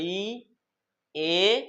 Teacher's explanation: সম্মুখ স্বর কি হয়েছিল বলতো আমাদের জীবটা কথা বলার সময় মুখের ভেতরে সামনের দিকে যাওয়ার চেষ্টা করেছে